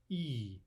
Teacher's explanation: Now you can maybe help remember that those are so-called soft vowels because, again, the tongue position, E. When we make that vowel, our tongue is in the palatalized position.